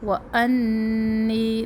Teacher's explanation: نون مشدد ایک الف کے برابر، پھر نی بھی ایک الف کے برابر